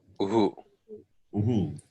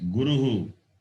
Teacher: The word Guru. The word Guru ends with the vowel U. And Visarga to that sound U will be Uhu.